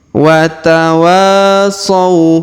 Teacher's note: Perhatikan huruf waw dipanjangkan dua harokat karena di depannya terdapat alif.